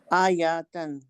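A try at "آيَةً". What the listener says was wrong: آجتن، آجاتن ہوگا تو زیادہ ہوگا، آجتن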